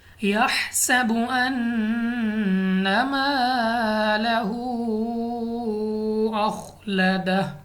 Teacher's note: اب یہاں پہ ہمارے پاس ہا اپنے مخرج سے ادا ہوگا۔ اس کے بعد سین سختی کے ساتھ پڑھیں گے، سیٹی والی آواز کے ساتھ۔ اس کے بعد نون مشدد ہے، غنہ کر کے پڑھیں گے۔